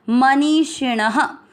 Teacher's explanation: ण में आ मिक्स किया है, ण में अ की मात्रा तो विसर्ग को पढ़ना है ह